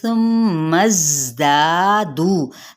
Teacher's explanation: نرمی کے ساتھ میم پہ غنہ کریں گے